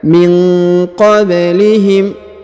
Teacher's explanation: Huruf ba berharokat sukun, maka dipantulkan atau dikolkolahkan.